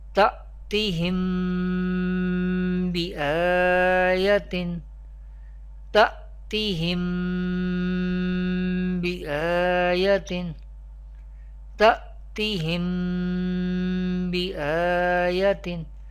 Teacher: We pronounce Ikhfa Shafawi with gunna